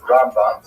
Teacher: Rambam is pronounced with the emphasis on the first syllable.